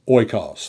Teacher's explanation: There's no H sound because of the smooth breathing mark.